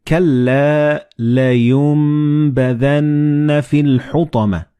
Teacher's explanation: Like in this example, you read كَلَّا لَيُنبَذَنَّ فِي الْحُطَمَةِ. So the noon and ba, they will be assimilated together and you will pronounce them as meme